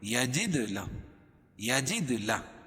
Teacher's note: دال پر قلقلہ کیونکہ یہ حروف قلقلہ کے 5 حرفوں میں سے ہے اور ان پر جزم ہے